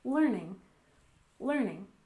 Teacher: And learning, we stress the first syllable